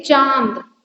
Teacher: तो चांद में जो अंग वाला साउंड आ रहा है वो नाक से कम आता है और से ज्यादा आता है इसीलिए इनको क्या कहा जाता है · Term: अनुनासिक